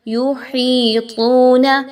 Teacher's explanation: یا مدہ واو مدہ دونوں ایک ساتھ آگے، 1 سے 2 الف کے برابر ان کی ادائیگی ہوگی